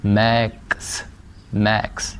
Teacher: جیسے ایکس ہے، میکس میں ایکس ایک الفابیٹ ہے لیکن یہ ساؤنڈز 2 پروڈیوس کر رہا ہے، ک اور س، میکس، میکس.